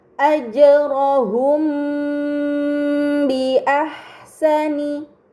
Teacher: terdapat mim sukun bertemu dengan huruf ba ini dinamakan Ikhfa Syafawi maka m sukun dibaca secara samar dengan gunah yang dipanjangkan